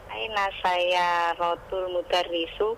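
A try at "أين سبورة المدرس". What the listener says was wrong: saya rotulnya betul. Mudarrisunya yang salah. Saya rotulnya betul. Mudarrisunya salah. Bukan mudarrisu, tapi apa? Mudarrisi. Saya rotulnya betul. Al-mudarrisu salah. Yang benar apa? Al-mudarrisi.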